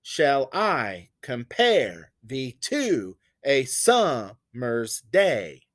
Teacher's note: an unstressed syllable followed by a stressed one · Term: iambic pentameter